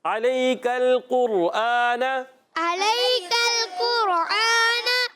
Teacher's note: قاف اگلے والے قاف کو را سے ملائیں گے. را ساکن سے پہلے پیش، را موٹا ہو جائے گا. قاف بھی موٹا ہے، حروف مستعلیہ میں سے ہے.